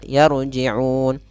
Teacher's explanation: Kemudian pada lafal la ada mad tabi'i fathah bertemu alif, yarji'un. Di sini ro-nya ro sukun didahului dengan fathah, maka ro tebal, yarji'un. Kemudian pada lafal un ada bacaan mad arid disukun, yaitu disebabkan karena adanya sukun arid.